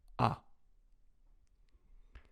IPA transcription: a